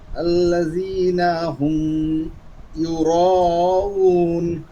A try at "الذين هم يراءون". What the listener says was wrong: হ্যাঁ আবার একটা আয়াত الذين هم يراءون টান কম দেওয়া যাবে না চার আলিফকে চার আলিফে দিতে হবে